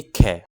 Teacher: ख बोलने पर कै की तुलना में ज्यादा हवा लग रही है। हाथ पर ख बोलने पर ज्यादा हवा लग रही है। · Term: महाप्राण